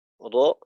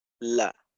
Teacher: র যখন আদায় করব তখন জিহ্বাটা একটু দাঁতের দিকে যাবে, আর লাম যখন দাঁতের মাড়ির থেকে অর্থাৎ সামনের উপরের দাঁতের মাড়ির থেকে উপরের তালুর দিকে যাবে। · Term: ইনহিরাফ